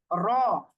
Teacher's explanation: আর রটা হচ্ছে র, এটা হচ্ছে জিহ্বার আগার পিঠ উপরের তালুর সাথে লাগিয়ে উল্টা করে লাগিয়ে, মানে আগার পিঠ লাগিয়ে হচ্ছে র